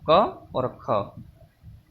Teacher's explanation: क और ख, ये हमारी कंठ से बोली जाने वाली ध्वनि है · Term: कंठ ध्वनियाँ